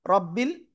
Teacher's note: রর উপরে জবর মোটা আওয়াজে পড়বো